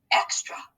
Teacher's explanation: when you hear that ah at the end of a word we know that that's going to be our schwa sound of a